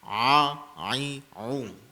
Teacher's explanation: huruf ain tu kena jaga ya. Dia ai au ya, jangan i u.